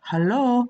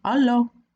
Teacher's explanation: Sometimes we pronounce the first letter as 'halloo' But not always We may just say 'allo'